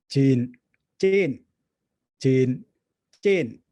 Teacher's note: the segments are identical. It's a j followed by a long vowel e, followed by an n and a glottal stop. But the difference is that you have register 1 and register 2. So this affects the way these two words sound.